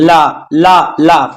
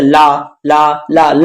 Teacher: जीभ के दोनों साइड से वायु बाहर की तरफ निकलती है, ठीक है। देखिए ला ला ला ला बोलेंगे आप, तो जीभ के दोनों साइड से वायु का प्रवाह बाहर की तरफ होता है, इसीलिए इसको बोलते हैं पार्श्विक व्यंजन, ठीक है।